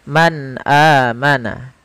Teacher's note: adalah kita menjelaskan suara muzharnya menjelaskan huruf yang dibaca jelas yaitu suara nunnya harus jelas tidak boleh ditahan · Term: izhar